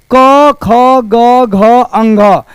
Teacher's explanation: यह क जो है कंठ से निकलता है और कंठ से निकालने वाले को कंठ ही बोलते हैं।